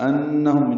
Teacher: انہم نون مشدد پہ غنہ ہے